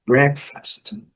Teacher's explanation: Então a primeira sílaba é a sílaba forte